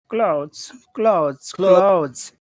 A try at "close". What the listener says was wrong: you got to make a longer vowel sound close